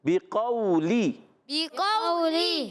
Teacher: قاف کا مخرج زبان کی جڑ تعلق نرم حصے سے قاف ادا ہوتا ہے · قو قاف حرف مستعلیہ میں سے ہے اور اس کے علاوہ واو ساکن سے پہلے زبر آ رہا ہے واو لین نرمی سے پڑھیں گے